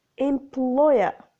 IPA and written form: ɪm'plɔɪə (employer)